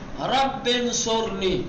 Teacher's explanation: ابھی یہاں پر رب پہلے آیا، اس کے بعد انصرنی آیا ہے، اور وہاں حمزہ وصل ہے، تو چونکہ بیچ میں ہے اس لیے حمزہ وصل کو نہیں پڑھیں گے، سیدھے سیدھے پڑھیں گے رب انصرنی، ٹھیک۔